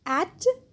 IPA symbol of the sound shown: æ